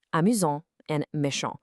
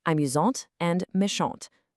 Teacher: The T goes from totally silent to a hard, crisp sound.